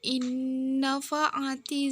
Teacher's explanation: nun sukun bertemu huruf nun bertasydid dibaca masuk dengan dengung dan ditahan sampai 3 harokat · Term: idgham bi gunnah